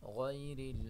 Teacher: غین کو موٹا پڑھیں گے، را کو باریک پڑھیں گے